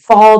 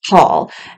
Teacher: the F sound or the V sound they're often times replacing it with P or the B sound so the word fall becomes Paul